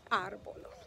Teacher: The accent is on the A, and so we emphasize that syllable and we say árbol. Árbol. What about the word Saturday?